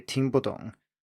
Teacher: the boo in here is not pronounced with the full fourth tone but rather a neutral tone